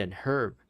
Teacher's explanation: if you're American I guess you don't pronounce the h